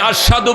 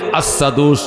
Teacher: তিনি আশহাদু বললে, আসাদু উচ্চারণ হইতো আসাদু, শিনটা সিনের মতো উচ্চারণ হইতো।